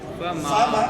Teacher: फा के ऊपर जबर आधी आधी आवाज, मीम से पहले अलिफ से पहले जबर पूरी आवाज